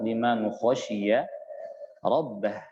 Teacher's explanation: Liman perjelas tanpa dengung